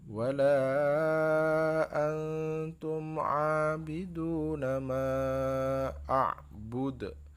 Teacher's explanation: dalnya terakhir mati itu adalah qalqalah ya. Qalqalah itu artinya memantul ya. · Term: qalqalah kubro